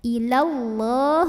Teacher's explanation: Maka tebal dengan cara mengangkat pangkal lidah. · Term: tafkhim